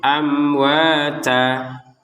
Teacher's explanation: Sekali lagi, yang tertulisnya tan, karena kita berhenti di sini, kita bacanya amwata, ta dengan panjang 2 harokat.